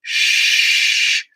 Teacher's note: this is an alveolar fricative it's voiceless you're using a blade rather than the tip of the tongue